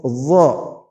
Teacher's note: Meskipun ujung lidahnya dha sama dengan dzal, tetapi karena dha ini memiliki sifat isti'la dan itbaq, maka yang membedakan dia dengan dzal adalah pada saat menyebut dha, pangkal lidah dinaikkan ke atas